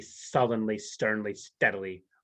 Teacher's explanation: those sibilants of the s's inside of there acting as kind of aggressive language